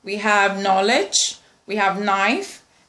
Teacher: Alveolar nasal sound is n or n, n or n. It goes with letter N.